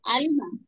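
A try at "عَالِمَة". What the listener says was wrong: আইনটা, এটাকে একটু চাপিয়ে, হ্যাঁ, আ, আলিমা, আ, আলিমা, আ, আলিমা।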